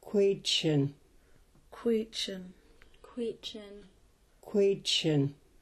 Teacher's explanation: These sounds are produced with the lips rounded and the back of the tongue raised towards the back of the roof of the mouth. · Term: K with a raised W